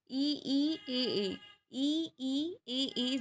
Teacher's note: आपकी जो जीभ है वो आप आगे को बोलेंगे, ई ई ए, इसलिए इसको अग्र स्वर बोला जाता है और ये चार होते हैं।